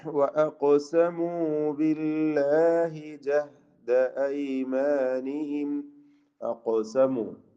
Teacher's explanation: ഖാഫിന് സുക്കൂനാണ്. ഖൽഖല സുഗ്റ നൽകണം, അതോടൊപ്പം തഫ്ഖീം ചെയ്യേണ്ട അക്ഷരവുമാണ്